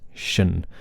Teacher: these shun endings, tion, should be just like that, shun, with a sh sound, okay? Not a tien or sien, but shun.